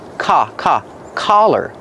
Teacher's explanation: The open sound ah like hot and stop.